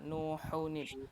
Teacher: Ya-nya jangan dipanjangin. Kemudian ha-nya dilatih lagi ya, tenggorokan tengah